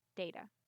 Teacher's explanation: my a at the end is a lot shorter